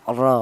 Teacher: Yang pertama seperti ini ada ro yang berharakat fathah ini dibaca tebal atau dibaca tafhim di mana untuk menebalkan huruf ra yang berharakat fathah ini menggunakan lidah bagian belakang diangkat ke atas